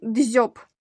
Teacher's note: перший звук ДЗ м'який тому що стоїть перед буквосполученням м'який знак о дзьоб один склад один голосний звук о ь твердий приголосний б